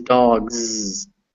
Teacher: a voiced version of s which we know is z